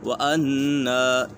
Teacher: یہاں پر نون مشدد ہے، نون مشدد میں ہمیشہ غنہ ہوتا ہے